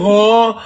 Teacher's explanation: ہا کی آواز سینے کے جوڑ سے نکالیں گے